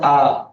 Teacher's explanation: প্রস্তুত আর গোলাকৃতের মাঝামাঝিতে আছে ধ্বনিটা, বা এটাকে স্বাভাবিক ধ্বনি বলে। ধ্বনিটার নাম হচ্ছে আ। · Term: কেন্দ্রীয় ধ্বনি